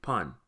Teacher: This is an open mouth short O and is pronounced pan.